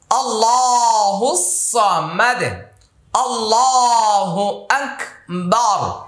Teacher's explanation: আল্লাহ শব্দের পূর্বে জবর চলে আসছে মোটা হবে